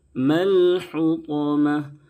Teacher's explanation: بڑی حا ہے، درمیانی حلق سے ادا کریں تاکہ چھوٹی ہا سے نہ بدلے